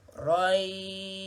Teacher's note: Bukan shin tu yang bunyi lebih. Ya yang bertanda mati tu yang kena panjang. 4 harakat. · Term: mad lin